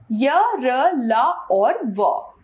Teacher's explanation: इनका उच्चारण करते समय जीभ मुंह के किसी भाग को स्पर्श नहीं करती। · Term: अंतःस्थ व्यंजन